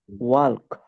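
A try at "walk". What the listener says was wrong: না, ওয়াল্ক না, এটা উত্তর হচ্ছে ওয়াক। এখানে এলটাকে বলা হয় সাইলেন্ট এল, অর্থাৎ নীরব এল। কিছু এরকম সাইলেন্ট এল, সাইলেন্ট এল, সাইলেন্ট ডি, অনেক জায়গায় আছে, মানে লিখে আসবে, উচ্চারণ আসবে না। ওয়াক, হাঁটা।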